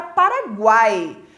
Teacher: Semivogal, vogal, mais semivogal. E aqui, então, é um tritongo oral, porque o ai sai somente pela boca.